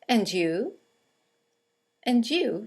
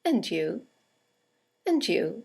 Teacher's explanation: and you is a statement it has a falling intonation and it's used to return the compliment or the greeting